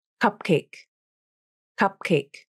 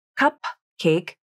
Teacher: It's not cupcake with a released P, but cupcake. The airflow is only released when you pronounce the next sound, the k in cake. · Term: unreleased consonant